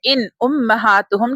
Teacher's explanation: کیونکہ نون ساکن کے بعد تھروٹ لیٹر ہے، حلقیہ لیٹر ہے حمزہ، اس لیے ہم غنہ نہیں کریں گے، اظہار کریں گے۔